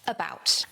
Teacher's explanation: And that first syllable is the schwa.